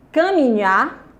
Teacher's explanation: a sílaba tônica é a última. Você circula nha.